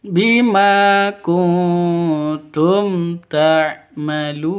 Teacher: nun mati bertemu dengan tak, samar didengungkan, siap-siap ke huruf taknya karena bacaan ikhfa hakiki